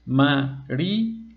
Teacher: como la y está acentuada eso hace que la y se convierta en una vocal fuerte y al ser dos vocales fuertes pueden ir en sílabas separadas